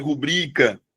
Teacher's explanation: A sílaba tônica de rubrica é o bri.